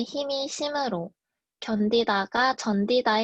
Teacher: 구개음화입니다. 강원도와 전라도에서는 힘이 심으로, 견디다가 전디다의 형태로 바뀌어 발음됩니다